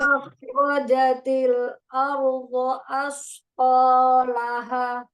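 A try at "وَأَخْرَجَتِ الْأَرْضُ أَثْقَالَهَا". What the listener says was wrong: Nomor 2 kenapa Ardo? Harusnya Ardu.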